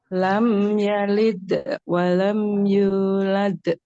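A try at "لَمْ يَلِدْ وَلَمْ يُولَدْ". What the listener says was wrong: Yalidnya agak cepat ya, tidak ada jeda. Lam yalid.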